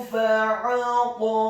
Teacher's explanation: huruf ha-nya dibaca tafkhim tebal fathah 2 harokat karena setelahnya ada alif kemudian diwaqafkan